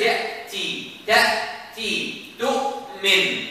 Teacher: you must lock the Hamza. It's locked. The vocal cord closed.